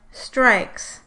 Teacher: in the second /s/, you can hear some frication but also a sort of snorting noise that indicates nasal air flow. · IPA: [nrã̝ɪk̚ s͋]